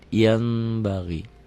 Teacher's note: Bunyi n-nya berubah menjadi m, ada bindeng sedikit. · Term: iklab